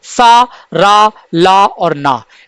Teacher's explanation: दंत मूल से होता है दंत मूल यानी मसूड़े से होता है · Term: दंत मूल व्यंजन